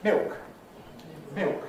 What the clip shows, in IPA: mɪok